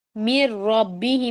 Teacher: نون کو completely ignore کرنا ہے، میم کو را سے ملانا ہے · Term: یرملون لیٹرز کا رول